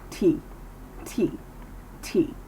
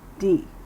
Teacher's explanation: feel the difference in our mouth with the D sound by not moving as much air through our tongue and teeth